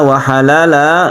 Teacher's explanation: 'iwad' berarti mengganti 'tanwin' ini dengan ' alif' yang 'mad' dan bertahan lama. · Kalau kita berhenti di sini maka iwad artinya ganti, tanwin ini diganti menjadi mad, panjangnya satu alif, itu disebut dengan mad iwad